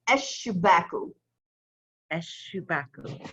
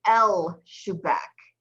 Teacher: So you don't pronounce the lam of the aleph lam. It puts a shedda over the first letter, in this case, a sheen. And we do that because sheen is a sun letter.